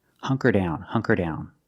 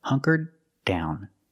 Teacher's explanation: in the past, you make a stop D. The tongue goes up and you stop the air